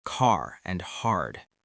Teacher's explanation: In many U.S. accents, the R is pronounced clearly in words like car and hard. In many British accents, that R at the end can be softer or not pronounced at all, so car can sound more like ka. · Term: American R, the American R